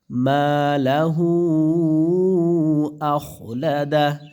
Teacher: মধ্যে মুনফাসিল তিন আলিফ টেনে দিবেন